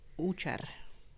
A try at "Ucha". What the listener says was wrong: No R at the end. Just Ucha. Like, sir, it's Usher.